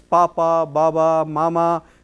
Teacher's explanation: lower lip touches the upper lip, it is bilabial